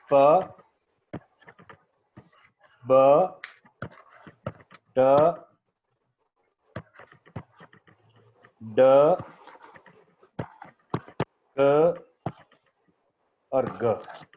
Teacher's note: अब इन सारी जो आपने साउंड्स मैंने सिक्स लिखी हैं, there are six plosive sounds in English language. In six के अंदर एक चीज कॉमन है कि ये सारी साउंड्स जो हैं वो blocking of the air passage से प्रोड्यूस हुई हैं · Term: plosives